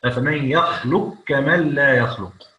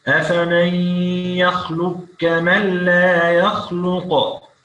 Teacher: والقاف هنا أيوة إدغام كبير للإمام السوسي، القاف في الكاف: أفمن يخلق كمن لا يخلق، يبقى القاف في الكاف.